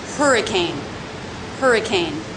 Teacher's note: three-syllable word stress on the first syllable it has the H constant sound the ER as her vowel · no shape in the voice lower and flatter also lower in volume